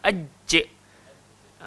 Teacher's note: Tengah-tengah lidah, langgar langit atas. Rasa aj. Cuba sebut. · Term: jim